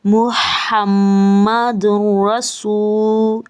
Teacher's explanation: میم مشدد ہے, غنہ کریں گے. یہاں پہ تنوین کے بعد روا حروف یرملون میں سے ہے, یہاں پہ ادغام کیا